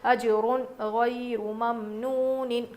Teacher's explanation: غننے کی آواز کچھ بھی نہیں نکالیں گے، اخفا کچھ بھی نہیں کریں گے، ناک میں نون کی آواز کو ناک میں چھپا کر نہیں پڑھیں گے، بلکہ جیسا ہے ویسے ہی پڑھیں گے. · تنوین یا نون ساکن کے بعد حروف حلقی میں سے کوئی حرف آ جائے اور غین حروف حلقی میں سے تو نون کی آواز کو ظاہر کر کے پڑھیں گے